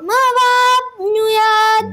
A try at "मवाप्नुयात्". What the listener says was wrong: बिल्कुल बढ़िया।